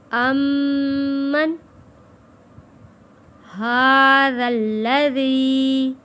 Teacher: میم تشدید پہ غنہ ادا کیا ہے